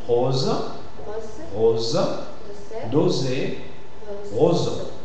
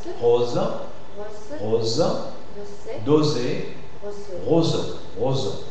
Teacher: S'il y a le son Z qui suit, le O se prononcera fermé. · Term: O fermé